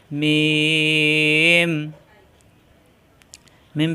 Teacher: মাখরাজ হলো দুই ঠোঁট থেকে উচ্চারণ মিম মিলানো ঠোঁট ছেড়ে দিয়ে আবার মিলালেই হয়ে যায়